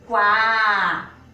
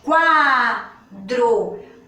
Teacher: Quando eu pronuncio quá, o som do U ele é mais fraco. Agora o do A fica mais forte. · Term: ditongo